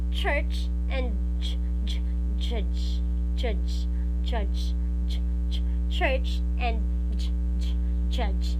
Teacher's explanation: the front of your tongue is touching the hard palate. Okay, so therefore both of these sounds are palatal.